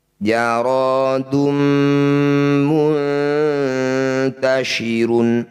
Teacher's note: bunyi dumah tanwinnya masukkan pada mim dengungkan dua harakat · Jaradum muntashirun, nun sukun bertemu tak disebut bacaan ikhfa aqrab. Bunyi nun dengungkan dua harokat, ketika dengung lisan kita sudah bersiap di huruf tak. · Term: Idam bunah